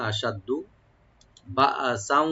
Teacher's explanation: দালটাকে double করে পড়তে হবে কিন্তু টান হবে না